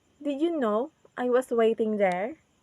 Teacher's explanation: in the word waiting our voice is goes down